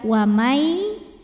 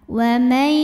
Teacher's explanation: bunyi nun sukun masuk ke ya wamai disertai bunyi dengung jadi di sini kita tahan Wai Nah dengungnya dari mana dengungnya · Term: idgham bhunah naqis